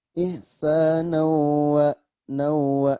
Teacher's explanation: Ihsanawa, nawa, ini maksudnya fathah tain bertemu dengan waw. Maka cara bacanya memasukkan bunyi tanwin kepada huruf wa. Memasukkan berarti artinya idgham.